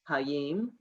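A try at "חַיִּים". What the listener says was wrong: Cha. It's a chet. Cha.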